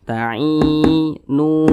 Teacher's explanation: Maka huruf nun ini dibaca panjang. Mat tabi'i panjangnya 2 harokat atau kira-kira 2 ketukan.